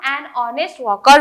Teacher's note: क्योंकि एच को हम साइलेंस रखते हैं एंड ओ को प्रोनाउंस करते हैं, इसीलिए हम एन ऑनेस्ट वॉकर बोल रहे हैं।